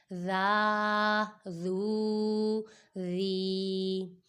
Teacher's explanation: ذال بھی حروف لثویہ میں سے ہے، اس میں سیٹی کی آواز نہیں نکالنی